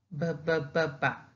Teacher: when we produce that sound or that consonant, we make a friction between both of our lips. Bilabial. B-b-b-b.